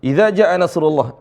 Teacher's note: jannya panjang sampai 5 harakat karena ada Hamzah